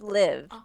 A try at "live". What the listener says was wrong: They live. Not leave. You keep saying leave. And there is a word leave. But we need it to be live. You're saying leave. You are saying this word. You are saying this word, leave. This word is live.